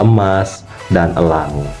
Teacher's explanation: Dan yang ketiga ada vokal e madia tengah. Jadi posisi lidah itu pas di tengah, tidak rendah, tidak tinggi, tidak ke depan, dan tidak ke belakang. dan juga posisi bibir netral tidak direntangkan dan juga tidak dibuka seperti itu. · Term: vokal E madya tengah